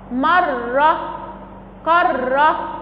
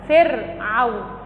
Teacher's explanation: التكرير في الراء المشددة بيكون أكثر من الراء الساكنة